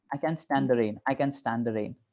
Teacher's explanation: here the t is sort of silent so we don't really pronounce it a proper T in that way